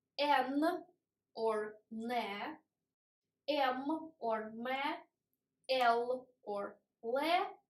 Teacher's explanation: tip of tongue looks down. It doesn't look at alveolus. It always moves more down to teeth, not to alveolus. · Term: sonorous consonants